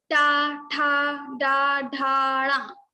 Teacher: Now another is ta varga. Ta varga we pronounce this ta varga from our murdha.